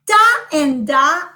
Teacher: i touch okay a part of my mouth with the tongue that is called the alveolar ridge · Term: alveolar sounds